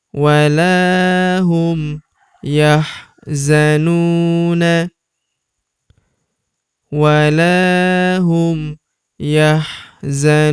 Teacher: huruf nu kita panjangkan 2 harokat karena terdapat waw sukun di depannya yang ini.